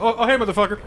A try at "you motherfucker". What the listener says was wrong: No, you can't do it like that. You have to have the intonation of, you motherfucker, or, you motherfucker! It also depends on the line that comes before it. It's just like, oh, you scared me, you motherfucker! Or it's like, oh, you slept with my wife, you motherfucker!